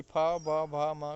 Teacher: पा वर्ग जो है ये ओष्ठ ध्वनियाँ होती हैं। ओष्ठ की सहायता से बोली जाती